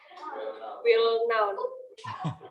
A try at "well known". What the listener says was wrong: Well known. Well known ya. Well known kayak gini ya. Nah, huruf K-nya nggak dibaca. Huruf K-nya itu silent ya, well known.